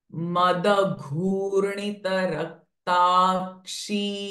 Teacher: Ghu is Dirgha and Mahaprana sound. G, Gh. Madagurnita Raktakshi.